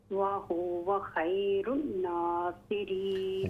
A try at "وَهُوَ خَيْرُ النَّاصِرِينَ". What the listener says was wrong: غنہ کریں نا نون مشدد ہے جب نون مشدد ہو اس میں غنہ ہوتا ہے وَهُوَ خَيْرُ النَّاصِرِينَ